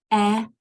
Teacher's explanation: Our mouth is open about midway, really relaxed sound.